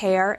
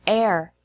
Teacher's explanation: the H sound is very soft so it's easy to confuse words with H and words with no H